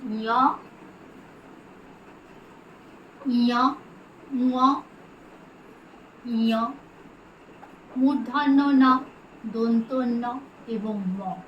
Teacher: অনুনাসিক বর্ণ বা নাসিক্য বর্ণ, কারণ এই বর্ণগুলি উচ্চারণের সময় একটা নাকি নাকি সুর বেরোয়